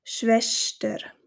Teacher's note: auf Schweizerdeutsch wird das ST in der Mitte des Wortes doch als Sch ausgesprochen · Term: Sch-Laut